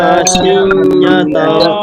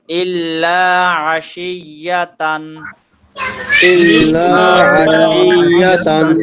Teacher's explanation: তানভিনের পরে ইজাহারের হরফ হামজা আসছে, সুতরাং ইজাহার করে পড়তে হবে, স্পষ্ট করে পড়তে হবে